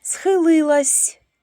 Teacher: Схилилась звук с в кінці слова вимовляємо м'яко